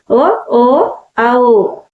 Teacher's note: గొంతు మరియు పెదవుల సహాయంతో పలికేవే కంక్యోష్టాలు